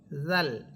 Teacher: হামদা সবর আ, হামসা এটা শক্ত হরফ, র সবর র, র হরফ এখানে মোটা হবে, আ র, হামসা ইয়া সবর আই, আ র আই, তালাম সবর তাল্লাম সবর লা, জালিয়া সে জি, আ র আই তাল্লাজি। এখানে জাল জিহ্বার আগা সামনের উপরের 2 দাঁতের আগার সাথে লাগবে